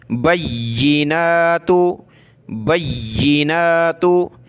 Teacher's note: बैयी, नून खड़ा ज़बर ना, ता पेश तू, बैयिनातु, बय्यिनातु, खड़ा ज़बर को एक अलिफ की लिमिट में खींचते हैं